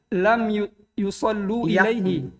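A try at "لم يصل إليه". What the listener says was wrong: Yasi. Lam yasilu biasa. Yasi di kasro sinnya karena ini asalnya yausilu. Kan dihilangkan wawunya. Yasilu.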